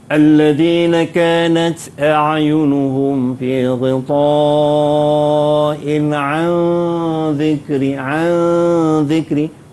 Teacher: Nun mati bertemu dengan zal. Dua harakat kena dengung.